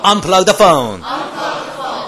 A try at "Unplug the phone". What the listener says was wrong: Unplug the phone. 제대로 폰이 아니고 phone.